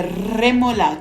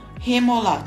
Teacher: para perto dos dentes e muito cuidado aqui Diferentemente do português o r no espanhol no início das palavras não tem um som suave e sem vibrar · palavra ou quando há um R duplo no meio da palavra ele deverá ser pronunciado forte como alguns gaúchos pronunciam e a língua vibra no céu da boca mas para perto dos dentes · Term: remol vibrando r, R forte